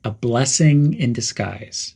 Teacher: The word in connects to disguise quickly.